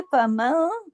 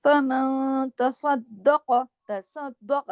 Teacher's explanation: ये नून साकिन के बाद ता है, इख्फा हकीकी गुन्ना कामिला